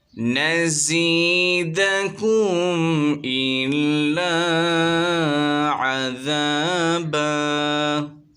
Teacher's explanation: یہاں پر اظہار شفوی ہو رہا ہے، بغیر غننے کے پڑھیں گے۔ الف سے پہلے زبر آ رہا ہے، الف مدہ ہوگا، ایک الف کی مقدار کھینچیں گے۔